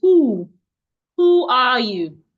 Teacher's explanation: The w sound should not be heard. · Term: silent w